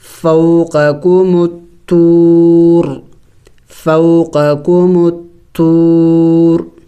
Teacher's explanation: اب وقف کریں گے تو وقف میں را کو سائلنٹ کر دیں گے اور یعنی ساکن کر دیں گے